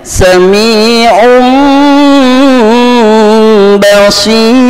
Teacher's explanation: Nun sukun atau tanwin menghadapi huruf ba, maka suaranya berubah menjadi suara M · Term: iklab